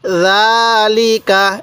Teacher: এরপরে বলবেন লাম জের লি কাফ জবর কা তাহলে জালিকা জালিকা এই জালের মধ্যে টান হবে লাম এবং কাফের মধ্যে টান হবে না